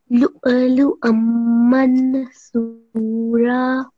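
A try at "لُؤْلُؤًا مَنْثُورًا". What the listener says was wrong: That was really good, mashallah. So you have made the correct pause.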